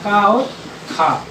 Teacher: इसको उच्चारण करने में ऐसा लग रहा है कि जैसे हमारे स्वर तंत्रियों में कोई कंपन टाइप का नहीं हो रहा है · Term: आघोष